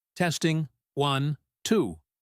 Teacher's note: The rhythm is technical rhythm. It is flat and repetitive.